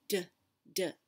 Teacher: you can feel your throat vibrate in d